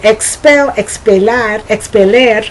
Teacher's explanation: I'm not saying es I'm saying ik